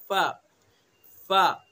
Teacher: सना उलिया का किनारा और नीचे के होठ का तरी वाला हिस्सा, सना उलिया का जो किनारा है उसको नीचे के होठ के तरी वाले हिस्से पर लगाएंगे, अदा करेंगे फा, फा।